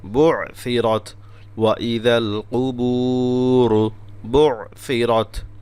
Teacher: বু'সিরাত আইন গলা থেকে এবং সা জিহ্বার আগা দিয়ে দুইটা কঠিন অক্ষর আছে পাশাপাশি